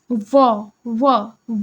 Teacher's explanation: ओष्ठ ध्वनि वह ध्वनि होती है ना जिसका जो उच्चारण होता है वो दोनों होठों के मिलने से होता है